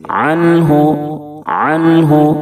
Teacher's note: नून को जाहिर करके फौरन आगे बढ़ जाएंगे